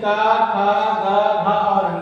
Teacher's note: कंठ को स्पर्श करते हुए आवाज निकलती है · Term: कंठ वर्ण